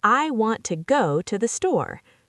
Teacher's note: The words I, to, the are not stressed. They're said quickly and lightly. · So in the sentence, I want to go to the store, you would stress want, go, and store